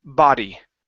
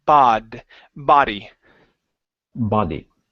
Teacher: instead of bo, it's an ah, and then use an R sound for the D. Ba-D. Instead of body, body.